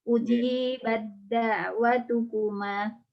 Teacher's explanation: Tak sukun diidghamkan ke dalam dal dengan sempurna, yaitu idgham kamil, yakni menjadi huruf kedua yang bertasydid.